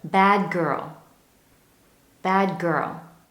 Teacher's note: do you notice that the D at the end of bad, nearly disappears instead, it becomes the good, bad girl, bad girl.